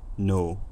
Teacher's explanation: the vowel is a monophthong. It has a pretty stable quality. A tiny snippet from near the start of the vowel sounds basically the same as a tiny snippet from near the end of the vowel.